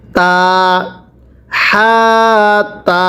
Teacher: এরপরে তাহাতা পড়ুন তাহাতা। এই হাটা উচ্চারণের সময় গলার মাঝখান থেকে বাতাস বের করবেন